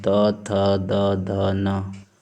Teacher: और चौथा आप लोगों का है दंत है। तो दंत का मतलब दांत से उच्चरित ध्वनियाँ। तो इनको उच्चारण करने के लिए दांत की सहायता लेनी पड़ती है, बिना दंत की सहायता से उच्चरित नहीं हो सकती। · तो देख पा रहे होंगे जब हम लोग बोलते हैं तो जो हमारी जीभ है दांत को स्पर्श करती है। त, थ, द, ध ऊपर का जो दंत है उसको स्पर्श कर, इसीलिए इनको दंत व्यंजन बोला गया है